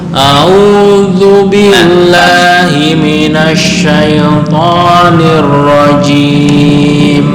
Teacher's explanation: A'udzu, ya walaupun belum sampai. Zal adalah ujung lidah dengan ujung gigi atas.